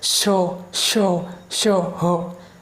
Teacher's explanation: आपके जो मुँह है उसमें से हवा थोड़ी जीभ से रगड़ खाती हुई निकलेगी, हवा मुंह से रगड़ खाती हुई निकलेगी, और उसका उच्चारण जब आप करोगे तो आपको गर्माहट महसूस होगी। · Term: ऊष्म व्यंजन